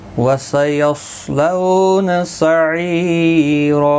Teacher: دو زبر کو بدل کر ایک زبر کے ساتھ وقف کریں گے، یعنی الف مدہ بنے گا، ایک الف کی مقدار کے برابر کھینچ کر وقف کریں گے. تو وقف بالابدال ہوگا.